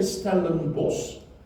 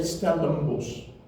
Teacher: And when you listen to people speaking in Stellenbosch, they won't say, in normal spoken language, they won't say Stellenbosch, because they will say Stellenbosch. The N becomes an M, naturally, because it's just an easier way of doing it.